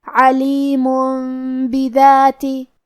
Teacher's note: کلمت بذاتی میں حرف الدال کی ادائیگی زبان کے سر اور اوپر والے دانتوں کے اندرونی کناروں سے ہے · کلمت علیمن میں حرف العین کی ادائیگی حلق کے درمیان والے حصے سے ہے. آخری میں میم پہ تنوین پیش ہے اور اس پہ چھوٹی سی میم ہے.